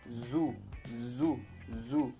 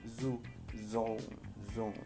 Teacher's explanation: Es como pronunciar la S, pero haciendo que vibren las cuerdas vocálicas. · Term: variante sonora